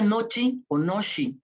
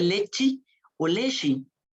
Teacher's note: la e que se convierte en I se cierra un grado por la influencia de una consonante palatal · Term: la palatalización